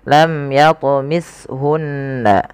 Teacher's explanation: cara bacanya adalah kita menahan suara bunyi gunahnya tidak langsung tapi bukan hanya sekedar tasdid tapi dia wajib ditahan suaranya kemudianfal